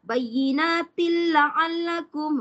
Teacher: Idgham bila gunnah. Maksudnya tak boleh dengung. Tak boleh bayyinatil, tak boleh lama.